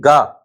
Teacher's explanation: बिना तंत्रियों के कंपन के नहीं बोल सकते आप। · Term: सघोष